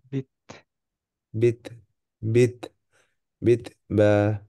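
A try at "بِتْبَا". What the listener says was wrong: আরেকটু বাতাস বের হবে, হ্যাঁ। বিত। বিত বা।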